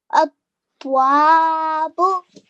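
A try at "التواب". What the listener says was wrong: Remember to join the ta with the vowel as well. So there are two tashdeed here.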